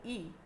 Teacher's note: जिभेचा पुढचा भाग टाळूच्या दिशेने उचलून ज्या स्वराचा उच्चार केला तो त्याला अग्रस्वर म्हणतात.